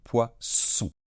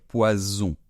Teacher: ce s il est davantage fermé on laisse moins passer l'air d'accord et on fait donc poisson alors qu'un poison quelque chose